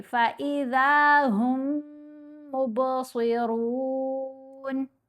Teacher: Simple الفاظ میں، سادہ لفظوں میں بولوں تو یہ سائلنٹ ہو گیا، یہ علیحدہ سے نہیں پڑھا جائے گا۔ یہ جو ہم کے ساتھ میم ہے، پڑھیں گے ہا کو میم سے ملائیں گے اس مشدد میم سے، اور غنہ کریں گے، با کے اوپر قلقلہ کریں گے۔